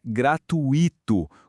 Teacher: Mas o certo é que o I fica junto, formando um ditongo. Então a pronúncia correta é gratuito, com a força toda ali, ou seja, é uma proparoxítona.